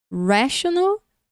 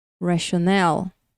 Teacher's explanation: Primeira palavra e segunda palavra. Mais forte no começo, mais forte no final.